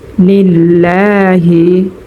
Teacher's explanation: এক আলিফ টান করব। লিল্লাহ লামের উপরে খারা জবর হওয়ার কারণে মধ্যে তবাই হয়েছে এক আলিফ টান হবে। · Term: একালিফ টান